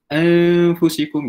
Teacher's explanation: Dia macam nak sebut nun tu tapi tak nak sebut. So dia macam bermain dekat langit-langit sahaja. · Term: ikhfa hakiki